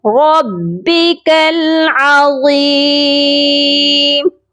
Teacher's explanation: را کو موٹا کریں گے اور یہاں پر ہم وقف کر رہے ہیں، اسی لیے یہاں پر مد عارض کر کے وقف کیا جائے گا